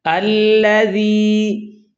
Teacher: یہاں ذال ہے، اس میں رخوت ہے، اس کو نرمی سے ادا کرنا ہے۔ ذال کا مخرج زبان کی نوک سامنے والے دو دانتوں کے کنارے ہیں، زبان جب اس جگہ لگے گی تو ذال ادا ہوگی اور نرمی سے ادا ہوگی۔